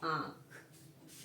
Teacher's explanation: नाक और मुंह दोनों का उच्चारण हमने किया तो शब्द बन गया हमारा आंख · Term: चंद्रबिंदु